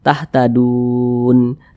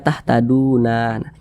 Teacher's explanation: huruf nunnya harus disukunkan atau harus dibaca mati. Maka dibaca tahtadun. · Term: mad arid li sukun